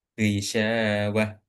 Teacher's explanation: memang syinnya seharusnya dibaca panjang